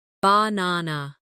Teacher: in the word banana, the stress is on the second syllable, banana. If you put the stress in the wrong place, it can sound strange even if your pronunciation of the letters is correct.